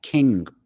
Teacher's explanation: it's a NG sound way in the back of the throat